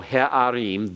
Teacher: Remember, that's because you have a guttural with a comets under it that is unaccented. It's unaccented because the accent comes on im.